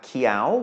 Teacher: Sala Qiao first. We have Qiao, which means green, is rising tone because of the high-class consonant